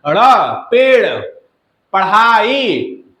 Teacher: इनके उच्चारण में जीभ को ऊपर उठाकर आगे की ओर फेंका जाता है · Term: उच्छिप्त व्यंजन